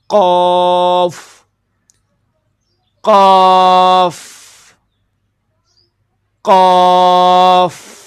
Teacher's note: قوف کا جو مخرج ہے زبان کی جڑ، یہاں پہ آپ تصویر کے اندر بھی دیکھ سکتے ہیں، زبان کی جڑ جب کوے کے قریب تالو سے لگے تو اس سے قوف ادا ہوتا ہے. قوف، اس کے اندر ہونٹوں کو گول نہیں کیا جائے گا، قوف نہیں، منہ کا ڈیزائن نہیں، صرف اور صرف جب آپ زبان کی جڑ کوے کے قریب نرم تالو سے لگائیں گے تو پھر یہ لفظ ادا ہوگا قوف قاف قاف.